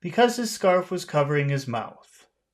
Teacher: there won't be any High tones they will all just be low because you want to sound serious